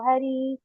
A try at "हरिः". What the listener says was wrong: இந்த வந்து ஹரிஹி அது மாத்திரம் ஒண்ணு கரெக்ஷன் பண்ணுங்க. ஹரின்னு படிச்சோம் இல்லையா? ஹரிஹி. தமிழ்ல ஹரிஹி.